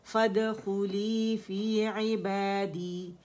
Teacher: جو دال ہے نا اس کا جو قلقلہ ہے یہ ہاف زبر اس کی ساؤنڈ ہوتی ہے, ٹھیک ہے. تو جبڑا جو ہے وہ زبر کے لیے تو 1 کاؤنٹ کے لیے کھلتا ہے اندر سے, لیکن جو اپنا یہ قلقلہ ہوتا ہے اس کے لیے ہاف زبر کھلے گا, ٹھیک ہے.